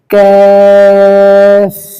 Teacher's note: এটা জিহ্বার গোড়া থেকে একটু বাড়িয়ে তার বরাবর উপরে তার সাথে লাগিয়ে উচ্চারিত হবে